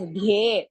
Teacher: So it is dhye, dha is half and ye is dirgha